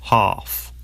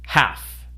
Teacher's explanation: Ah in UK English normally becomes an A sound in American English.